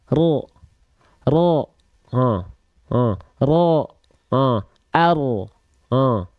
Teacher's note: jadi dia bukan dilafalkan betul-betul dari bagian ujung lidahnya banget tapi dia dilafalkan dari bagian punggung lidah kita